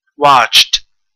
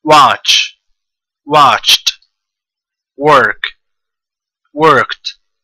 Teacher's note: it ends with ch which is unvoiced so when you put Ed to it watched the Ed becomes T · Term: unvoiced sounds